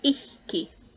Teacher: pre-aspiration, which is a puff of air before the consonant · ichke, which is a little bit further forward in the mouth, and that's the slender unlenited C.